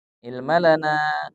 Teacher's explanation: na dibaca panjang 4 harokat. Kalau qalu dibaca 2 harokat, la 2 harokat, nah di ilma lana, lana dibaca 4 harokat. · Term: mad jaiz munfasil